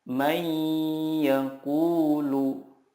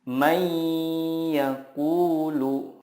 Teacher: jangan lupa untuk menahannya dan disertai dengan gunnah 2-3 harokat.